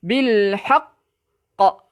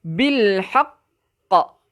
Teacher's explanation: Ada qaf kan? Jadi bila ada qaf di hujung tempat kita nak berhenti, di atasnya ada sabdu, kita berhenti sekejap. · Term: asyaddul kubra